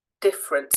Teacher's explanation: that first e is not stressed when we speak